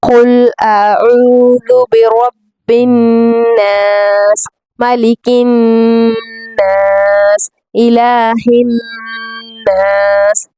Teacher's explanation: تینوں نون پر ہم نے غنہ کرنی ہے